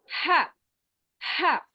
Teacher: हा को हम दरमियानी हलक से अदा करेंगे, middle part of the throat, वस्तुल हल्क, उससे अदा करेंगे।